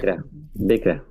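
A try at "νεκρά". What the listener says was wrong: Acuérdense que esa que es como una V para nosotros es N, necra.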